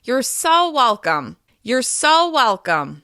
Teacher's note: you can even hold the word so a little bit longer and use a higher pitch in order to make it sound even more sincere